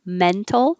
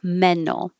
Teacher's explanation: you can say mental with the t mental or no t mental